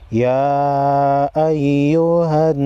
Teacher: نون مشدد کو غنہ کریں گے